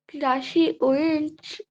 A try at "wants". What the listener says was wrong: উইন্স না ওয়ান্স